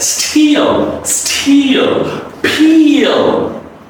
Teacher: the last L is pronounced as a dark L.